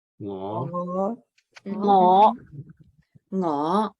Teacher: Now that's your 5th low rising tone. So it's ngõ. It has that swing up.